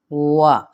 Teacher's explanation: واو کو ہونٹ گول کرتے ہوئے ادا کریں گے۔ عموماً لوگ کیا غلطی کرتے ہیں، وا کہہ دیتے ہیں، وا نہیں ہے یہ وا، یعنی ہونٹ پہلے گول کریں گے۔